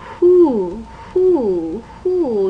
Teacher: when you say who who who your tongue has moved and it's not the tip of your tongue but the back of the tongue